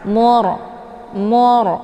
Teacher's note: ditinjaunya kepada harakat di belakang kalau harakat di belakangnya zumah maka ra ini otomatis dibaca tebal ya dengan posisi pangkal lidah terangkat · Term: ro sukun